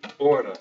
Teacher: Hour in Portuguese is hora. The H is not pronounced.